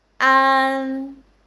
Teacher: there is an n sound after ah, so it will become a nasal sound, a nasal final. The air come out from nose.